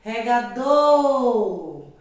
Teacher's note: observe que a sílaba do, ela foi pronunciada num período mais longo, né? Então, logo sinaliza que ela é a sílaba mais forte. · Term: sílaba tônica